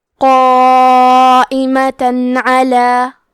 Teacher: قائمہ، کیونکہ یہ مد واجب متصل ہے تو ہم اپنی آواز 4 مد کے برابر لمبی کریں گے، آخری میں تا پہ تنوین زبر ہے، پھر حرف العین آتا ہے کلمت علا، عین حروف الاظہار میں سے ہے تو ہم تنوین کو ظاہر کریں گے اور بغیر غنہ سے یہ حکم کو ادا کریں گے